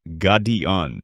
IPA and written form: ˈɡɑːdiən (Guardian)